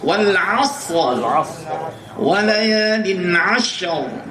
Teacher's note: Roknya tetap tebal dan sinnya pun juga tetap hamas